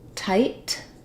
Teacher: this first T, tight, is really strong and there's a burst of air